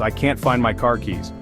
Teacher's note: Now picture a Brit saying the same sentence, "I can't find my car keys." The A in can't is longer and the R in car is softer or sometimes entirely dropped.